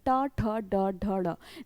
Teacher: ट वर्ग में अगर हम बोलकर देखें ट ठ ड ढ ड़, जीभ उल्टी होकर तालु को स्पर्श कर रही है और इसका उच्चारण स्थान हो जाता है मूर्धा, यानी कि मूर्धन्य, जीभ उल्टी होकर तालु को स्पर्श कर रही है और टा वर्ग के सभी व्यंजनों का उच्चारण स्थान हो जाता है मूर्धन्य।